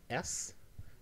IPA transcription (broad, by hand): s